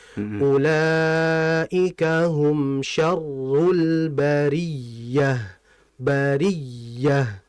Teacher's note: Kadang kita enggak menabrkan ya bertasyid itu ada istilah namanya nabr. Nabr itu dengan suara yang nyaring karena adanya tasdid, suara hentakan.